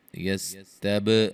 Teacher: یستب، با پہ قلقلہ کریں گے اور را کو موٹا ادا کریں گے، وہ مدہ ہے، وقفاً مد عارض وقفی ہوگی۔